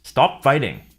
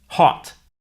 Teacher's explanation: the American o sound is an unrounded vowel